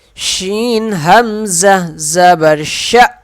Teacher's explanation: یہ حمزہ ہے، جھٹکا دیں گے